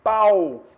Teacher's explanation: Então, nesse caso aí, pau, eu tenho o A com U, beleza? Semivogal U,